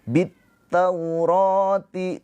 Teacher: Jadi setelah alif lam ada tasydid. Jadi dari bi ini langsung ke ta. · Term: alif lam syamsiyah